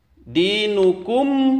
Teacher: dibaca mad asli panjangnya dua harokat